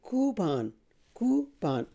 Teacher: the stress is on the first syllable, and then this sound is oo. It's a long vowel. So you say coo, coupon, coupon, not coupon, coupon.